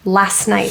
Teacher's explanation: Last has an ST, and the next word starts with a consonant, so that T gets dropped. Last night, rather than last night.